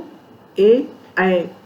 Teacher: एदैतो कंठ तालु। एदैतो ए, ऐ का उच्चारण स्थान कंठ और तालु दोनों है।